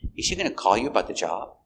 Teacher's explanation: we stress call call is the most important verb here